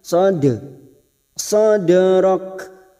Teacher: ada huruf Dal sukun yang mati asli di tengah kalimat namanya qolqala sugro jangan lupa dipantulkan